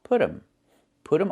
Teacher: And you hear um instead of them.